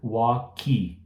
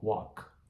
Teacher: pare no K e deixe o K bem sutil. Não tem vogal depois